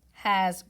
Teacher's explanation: Remember, S has two sounds. This S is making a Z sound because of it's following a vowel. Vowels vibrate, so the S vibrates.